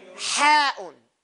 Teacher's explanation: That ha is in the middle part. It comes from the middle of your throat.